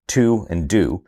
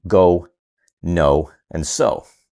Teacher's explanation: words like to, and do that produce that long vowel ooh sound as opposed to the more cooperative long vowels in go, no, and so